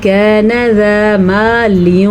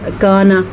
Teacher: नून को आपने रखना लेकिन थोड़ा सा उसको छुपाना है, थोड़ा, इख्फा का मतलब होता है छुपाना।